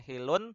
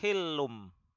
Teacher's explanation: tanwinnya tersebut bacaannya ditukar dari yang tadinya n menjadi m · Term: iqlab